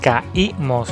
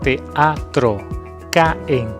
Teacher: Estas 2 vocales deben separarse, deben formar sílabas distintas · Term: hiato